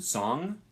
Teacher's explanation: It's a single sound, and it's pronounced like an N, except at the back of your throat, or the back of your mouth. So it's a velar sound.